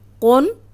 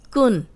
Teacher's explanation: یہ موٹا قاف ہے اور یہ باریک کاف ہے